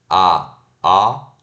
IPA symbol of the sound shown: ɑ